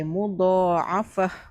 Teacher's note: Bunyinya ha matilah. Dia tak bunyi ta.